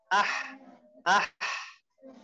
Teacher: tengah-tengah tenggorokan tapi agak naik